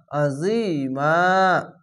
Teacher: আইনটিকে মোটা করে গলা চিপে পড়বেন